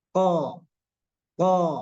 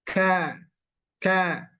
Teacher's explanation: dan K ya Secara makhraj dia sama-sama huruf lidah hanya saja kalau Q ini dipangkal sekali kalau k ini dia agak bergeser sedikit kemudian dua-duanya ini harus dibenturkan o ka o ka o ka